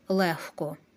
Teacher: дзвінки приголосні в українській мові не оглушуються гриб книжка казка але звук г перед глухим оглушується та уподібнюються до хи